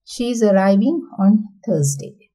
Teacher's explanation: for the falling patterns, for turn taking, completion of turn to talk